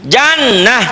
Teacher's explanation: karena tak marbuto itu kalau dihentikan berubah menjadi ha ha kalau tidak dihentikan tetap tetap ta Jadi kalau siang apa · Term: ta marbutoh